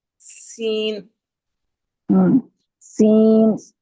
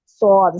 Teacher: सीन में बारीक और सीटी की तरह होगी और स्वाद में आवाज मोटी और सीटी की तरह होने के साथ-साथ जबान के पिछले हिस्से को ऊपर की तरफ बुलंद भी करेंगे